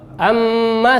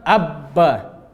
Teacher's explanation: Amma nempel lemah. Abba nempel kuat.